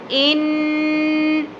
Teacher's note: کے بعد آگے ہمارے پاس نون مشدد تو غنہ ہوگا، ان، نون کی ساؤنڈ کو نوز میں ہولڈ کرنا ہے